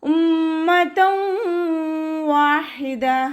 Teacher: തെൻവീനിന് ശേഷം ഇദാം ബിഗുനയുടെ അക്ഷരമായിട്ടുള്ള വാവ് വന്നു. തെൻവീനിലുള്ള നൂനിനെ വാവിലേക്ക് ലയിപ്പിച്ച് ഒന്നയോടുകൂടി ഓതാൻ ശ്രദ്ധിക്കുക